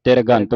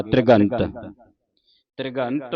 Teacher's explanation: ਤ੍ਰਿਘੰਤ ਬੋਲਣਾ ਧੱਦੇ ਦੀ ਆਵਾਜ਼ ਉਚਾਰਨ ਕਰਨੀ ਹੈ ਤੇ ਪੈਰ ਦੇ ਵਿੱਚ ਰਰ ਲੱਗਾ ਇਸਨੂੰ ਜਲਦੀ ਦੇ ਨਾਲ ਉਚਾਰਨ ਕਰਨਾ ਜੇ ਆਪਾਂ ਜਲਦੀ ਦੇ ਨਾਲ ਉਚਾਰਨ ਨਹੀਂ ਕਰਦੇ ਤੇ ਫਿਰ ਪੂਰਾ ਰਾਰਾ ਲੱਗਦਾ ਇੱਥੇ ਤਿਰਗੰਤ ਬਣ ਜਾਂਦਾ। ਜੇ ਆਪਾਂ ਜਲਦੀ ਦੇ ਨਾਲ ਉਚਾਰਨ ਕਰਦੇ ਹਾਂ ਤੇ ਫਿਰ ਅੱਧਾ ਰਾਰ ਲੱਗੇਗਾ